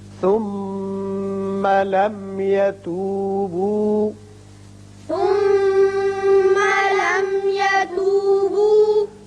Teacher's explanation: یہ میم مشدد حرف غنہ ہے یہاں غنہ کیجئے. یہ میم ساکن جو ہے یہاں اظہار شفوی ہوگا.